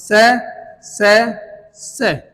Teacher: महाप्राण जिसमें ज्यादा वायु यूज की जा रही है